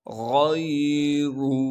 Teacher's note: عَلَى الْكَافِرِينَ غَيْرُ، غین موٹے حروف میں سے ہے، لہٰذا غین کو موٹا کر کے پڑھیں گے، اور غین کو آگے یائے ساکن سے ملائیں گے، را پر پیش ہونے کی وجہ سے را کو موٹا کر کے پڑھیں گے